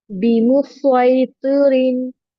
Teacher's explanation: इसमें सीन को नहीं पढ़ते, स्वाद को पढ़ेंगे, हैवी साउंड और सिटी का साउंड दोनों आएगा